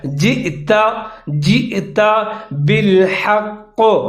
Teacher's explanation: جئت بالحق، قاف کے نیچے زیر لکھا ہوا ہے لیکن وقف کریں گے اور قاف مشدد ہے تو اس کو مضبوطی کے ساتھ پڑھیں گے موٹا کر کے۔